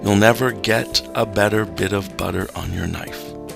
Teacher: Notice the loose assonance of the E or schwa vowels.